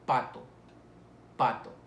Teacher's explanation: para producir el sonido de p se impide el paso total del aire y se expulsa de manera explosiva